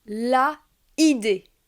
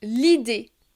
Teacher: Par exemple, je ne peux pas dire la idée, mais je vais dire l'idée. Il y a deux voyelles, le A et le I, l'une à la suite de l'autre, et je vais supprimer le A pour faciliter la prononciation. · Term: l'élision